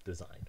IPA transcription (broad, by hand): dəzaɪn